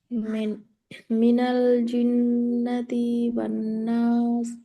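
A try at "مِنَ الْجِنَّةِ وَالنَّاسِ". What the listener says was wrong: जिन्नति, इसको भी एक हरकत करना है, जिन्नति, ती, जिन्नती, बस ज़्यादा लंबा नहीं, जिन्नती वन, जिन्नती, हाँ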